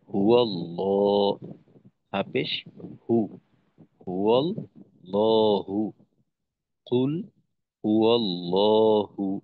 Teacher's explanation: তো এখানে আল্লাহ শব্দ আছে, তো যেহেতু আল্লাহ শব্দের দাসীদের ডানে জবর, তো আমরা লামকে মোটা করে পড়বো।